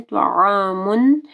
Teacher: طا کو ہیوی پڑھنا ہے اور عین کو گلے کے درمیانی حصے سے واضح پڑھنا ہے